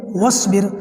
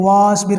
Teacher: واو کو سیدھا سواد سے ملا دیں گے، بیچ میں جو الف ہے اس کو نہیں پڑھا جائے گا۔ بہت سارے لوگ غلطی کرتے ہیں، واسبر کرتے ہیں، واو الف سواد زبر وس، ایسے نہیں ہوگا۔